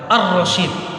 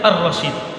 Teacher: tapi ketika kita baca Ar-Rasyid, maka lamnya hilang. Tapi dalam tulisannya tetap terlihat. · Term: idgham syamsiyah